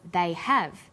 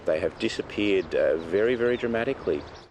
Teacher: when stressed the H sound is pronounced